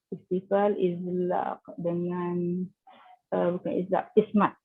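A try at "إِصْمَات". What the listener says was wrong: Tebalkan kalau tidak dibunyi sin ya. Kalau tak tebalkan dibunyi sin, ismat bukan ya. Swat dia ada apa? Itbaq ya. So kena itbaq dia, itu dibunyi berbeza dengan sin ya.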